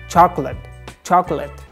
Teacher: The middle O doesn't pronounce.